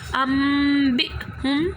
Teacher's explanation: لیکن ہم نے نون ساکن کی آواز کو میم سے چینج کر دینا ہے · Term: اقلاب